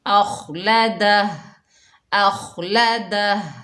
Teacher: خا کو موٹا ادا کریں گے، اخ اخ، اور وقف کی حالت میں ہا جو ہے یہ ساکن ہو جائے گی، اخلدہ اخلدہ۔